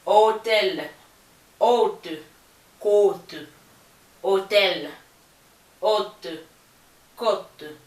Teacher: Sur la lettre O, le son reste O, excepté qu'il est un peu plus long, la prononciation est un peu plus longue